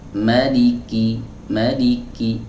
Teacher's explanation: Tapi ingat, sifat syiddah harus lebih dominan dari sifat hams. Ya, jadi kalau misal kita ucapkan maliki, maliki, sedikit saja hamsnya itu sudah cukup